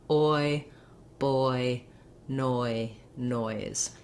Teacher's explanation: Just saying noi, like you would say in boy or toy, gives you time to get that oi vowel. It's a longer vowel, it glides, and as soon as I put the Z sound of noise on, it might be harder for me to get both parts of that sound. · oi moving from that kind of rounded open jaw to an unrounded closed jaw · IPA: /ɔɪ/